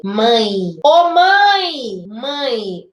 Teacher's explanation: Mãe. Esse E acaba fazendo um som de I. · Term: semivogal